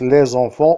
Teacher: enfants on dit les enfants on on écrit les enfants mais on prononce les enfants on a la présence du son ze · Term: son de liaison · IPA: [lezɑ̃fɑ̃]